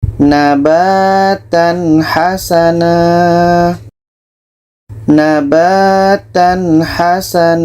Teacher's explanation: ini izhar halq harus dibaca jelas contoh nabatan Hasan nabatan Hasan tanwin jelas ha jelas dan tidak ada dengung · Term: izhar halqi